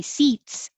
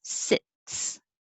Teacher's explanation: the i is a little lower than the e